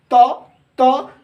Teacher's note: जब त का उच्चारण करते हैं तो हमारी क्या होती है, हमारी जिह्वा जो है दांत को स्पर्श करती है